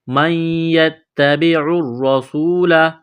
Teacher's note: نون ساکن کے بعد یا ہے، یا کے اوپر تشدید ہے تو یہاں اس نون کو حذف کریں گے، نون کو نہیں پڑھیں گے ، نون کا یا میں ادغام کریں گے، مَنْ يَتَّبِعُ الرَّسُولَ، · گے، نون کا یا میں ادغام کریں گے، مَنْ يَتَّبِعُ الرَّسُولَ، را کو دبائیں گے، سین میں سیٹی کی آواز پیدا کریں گے